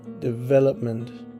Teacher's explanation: only the E in the second syllable is stressed, because the tonic is on, as I say, the V.